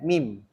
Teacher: makhraj huruf mim yang keluar daripada dua bibir. Jadi huruf mim ni daripada bibir.